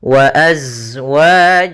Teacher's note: Maka ini kita namakan dengan hukum tajwid berupa izhar syafawi. Maka suara mimnya harus dibaca dengan jelas, tidak boleh ditahan